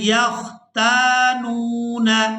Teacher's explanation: تا کو الف مدہ کی وجہ سے، نون کو واو مدہ کی وجہ سے کھینچ کر ادا کیا جائے گا۔